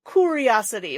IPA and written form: kʊriɑsəti (curiosity)